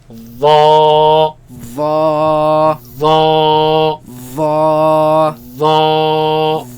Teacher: the front flat part of the tongue against the edge of the upper teeth, right? And it is heavy. That means the back of the tongue is raised, and it is soft. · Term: heavy letter